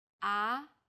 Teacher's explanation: the second tone starts with a middle pitch then Rises quickly